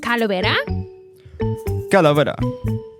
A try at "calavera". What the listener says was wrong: Calavera. You didn't need to say it at the same speed as me.